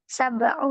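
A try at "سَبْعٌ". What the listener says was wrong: Ya, ditanwin aja. ditanwin ya, angka-angkanya semuanya ditanwin kecuali kalau belasan.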